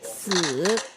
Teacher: the word to die is a fall followed by a rise, the third tone.